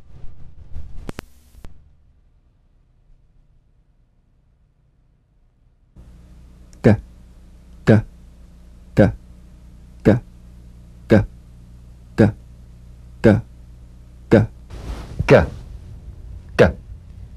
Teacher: The voiced tongue back plosive consonant G. Place the back of the tongue in gentle contact with the soft palate.